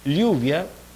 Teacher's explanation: la lengua se interpone en el pasaje de aire y el aire busca pasar lateralmente ese obstáculo. Vibrantes, que de alguna manera el aire es bloqueado intermitentemente, puede tener un formato fuerte y otro un formato débil. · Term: laterales, Laterales